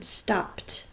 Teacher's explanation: the p is an unvoiced consonant so the e d says the unvoiced sound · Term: unvoiced T sound